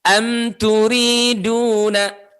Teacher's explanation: Mimnya dibaca jelas dengan cara merapatkan kedua bibir sesuai dengan tempat keluarnya. Oke. Tanpa disertai dengan bunyi dengung. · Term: idhar